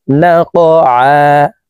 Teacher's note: কফ কলকলার হরফ উপরের দিকে ধাবিত করে ধাক্কা দিয়ে উচ্চারণ করব।